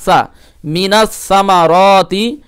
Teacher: সা এর মাখরাজ হচ্ছে জিহ্বার আগা উপরে দাঁতের আগাই লাগিয়ে